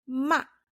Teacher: the fourth tone I always say it's like sharp and falling but really it's when your mom scolds you in a harsh